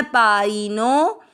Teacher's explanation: फिर नो के बाद में अवग्रह, आपको नो की मात्रा को लंबा खींचना है।